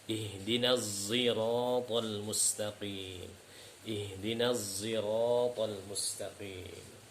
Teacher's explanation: Yang ketiga yaitu adalah huruf zai ishmam. Yaitu huruf shad yang bercampur dengan zai